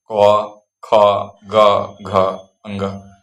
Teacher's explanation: कंठ से है अर्थात जुबान के पिछले हिस्से से गले के आंतरिक भाग से निकलता है। क ख ग घ अ ङ तो ये जिन स्थानों से इन वर्णों का उच्चारण होता है वही उनका उच्चारण स्थान माना जाता है। · ता, चा, छा, जा, झा, ञा। का वर्ग कंठ से है, अर्थात जुबान के पिछले हिस्से, गले के आंतरिक भाग से निकलता है